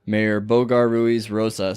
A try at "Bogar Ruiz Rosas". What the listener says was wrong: You gotta roll them R's.